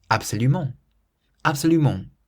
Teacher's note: So we stress the ment at the end